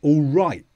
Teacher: the t is often dropped